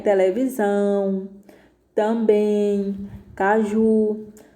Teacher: oxítona quando a última sílaba é a mais forte